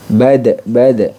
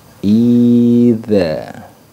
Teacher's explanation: sifatnya jahar dan syiddah sedangkan idza dia sifatnya jahr dan rakhawwa jadi sudah berbeda sifat ya berbeda sifat dan makhrajnya juga berbeda